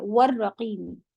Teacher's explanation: سے پڑھا جائے گا، اصحاب الکہف والرقیم، رو ہیوی کریں گے، وا جو ہے ہوٹ گول سے ہوتا ہے